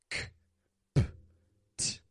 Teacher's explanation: We call these stop consonants because in order to pronounce those letters, we stop the air and then we release it as a little burst of air.